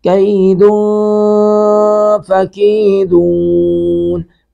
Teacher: دن نون تنوین کے بعد فا ہے، یہاں پہ بھی اخفا کریں گے